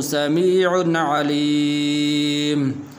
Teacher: یہاں پر غنہ نہیں کریں گے اس لیے کہ آگے عین حروف حلقی میں سے ہیں